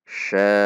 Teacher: Ada hentakan. Itu menandakan ada hamzah sukun. Kalau kita baca sya' saja, tidak ada hentakan, tidak terhentak, tidak tertahan, maka hamzahnya tidak terbaca.